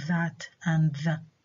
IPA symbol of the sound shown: ð